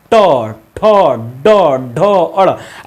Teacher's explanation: बोल ही नहीं पाओगे क्योंकि ये जीभ से निकलता है, जीभ जाकर ऊपर मुड़ती है, मुड़ कर ऐसे फेंकती है आवाज को, टक टक की आवाज आती है, ट ठ, यानी कि वो मुर्दा से मतलब मुड़ मुड़ कर आ रही है।